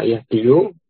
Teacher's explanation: makhrajnya huruf ya itu di wasatil lisan